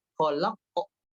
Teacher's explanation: Nah, berikutnya adalah pada qalqalah. Qalqalahnya tadi masih cenderung ditahan, tidak lepas. Harus lepas. Khalaq. Ah, itu masih terlalu ditahan.